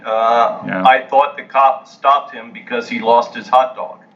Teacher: thought and glossed and dog are pronounced with an ah sound